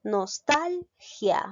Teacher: Me doy cuenta que la mayor fuerza de voz recae en la sílaba tal